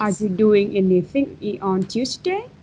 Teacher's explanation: you have to focus on the intonation up at the end of the sentence.